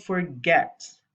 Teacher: the last syllable get is stressed